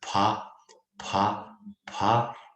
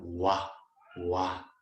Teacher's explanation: they read in the consonants as pa, pa, pa, and in the sentence, if it comes along, then it become wa, wa.